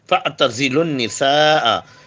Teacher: زے جو ہے whistling sound ہے، زبان کی نوک، سامنے کے دونوں دانتوں کا اندرونی حصہ